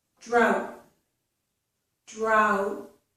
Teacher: I put my tongue up there for the T, but I don't release it. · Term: unreleased T